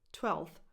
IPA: twɛlθ